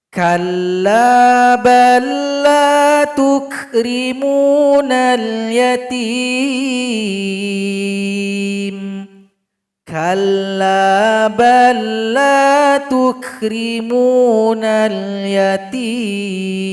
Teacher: Kita lihat contoh berikutnya, huruf lam sukun berjumpa dengan huruf lam. Makanya kita baca huruf yang berikutnya. Lam sukun telah gabung kepada huruf lam.